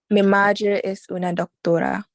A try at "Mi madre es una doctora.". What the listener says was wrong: Okay, that E is being stretched too much. Mi madre, not mi madre. Mi madre. Remember the vowels have nice short brisk sounds.